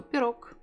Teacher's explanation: I don't say G, I say K.